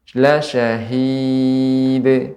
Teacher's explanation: tidak ada hamzah pada akhir pengucapannya.